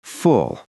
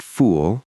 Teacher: They say fulfillment with a long oo sound. But it's actually a shorter, rounder sound, like the vowel in foot or pull. It's quick, full, not fool, full.